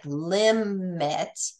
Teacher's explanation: I'm getting ready for the M but I really don't I really don't release that M till the second syllable